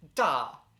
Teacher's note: the fourth followed by the first tone